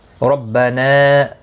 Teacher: را زبر کی وجہ سے پر پڑھا جائے گا ، نا مد منفصل ہے، 3 الف کی مقدار کے برابر